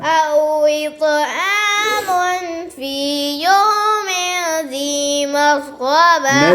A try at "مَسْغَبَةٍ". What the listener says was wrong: नस्सीन बारीक बने और दो गुन्ने आपने छोड़े एक मून पे और मीन पे أو إطعام في يوم ذي مسغبة